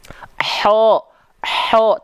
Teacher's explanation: kalau dia dilafalkan dari tengah tenggorokan ya jadinya H kecil nafasnya berbisik karakternya contoh Ho tuh jadi lembut ya jadi berbisik ya karena